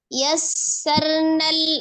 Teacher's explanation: ro-nya ada sukun, sebelumnya fathah maka dibaca tebal, ro-nya yassarnal, lamnya disukunkan maka dialirkan juga sebagian, nal qur'a, ro-nya dibaca tebal sebelumnya dhammah ya, ro sukunnya dibaca tebal, qur'a, a-nya dua harokat, di situ ada alif kecil. · Dan memiliki huruf sin sendiri memiliki sifat selain dia alhams, mengalir nafas, kemudian raghah, mengalir suara, dan memiliki sifat yang tidak memiliki lawan yaitu as-safir ya. Jadi dia memiliki desisan ya, desis.